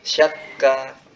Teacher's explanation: Jadi udara yang tertahan lalu terlepas itu tidak perlu ditambah dari tenggorokan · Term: huruf kaf